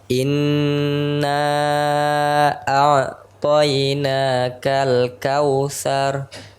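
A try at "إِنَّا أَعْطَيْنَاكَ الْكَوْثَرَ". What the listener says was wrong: Thar. Tebalkan ra-nya. Thar.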